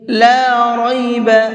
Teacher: لام کو تھوڑا سا کھینچ کر کے پڑھیں گے کیونکہ یہاں پر الف مدہ ہے، اور را کو پر کر کے پڑھیں گے۔